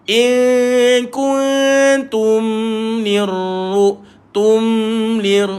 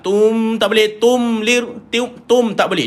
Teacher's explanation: Dia mati mim. Dia ada sifat rakhawah pada mim. Dia kena jalankan bunyi dia.